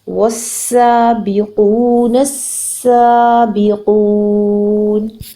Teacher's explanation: تشدید کا مطلب ہے یہاں پر 2 سین پائے جاتے ہیں، ایک سین کے اوپر سکون ہے اور ایک سین کے اوپر حرکت ہے، تو ہم نے اس کو دھیان سے ادا کرنا ہے. پلس سین از اے وسلنگ لیٹر، اس کی وسل کو ضرور پرومیننٹ کرنا ہے